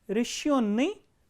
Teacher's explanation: the stress is on yo, the second syllable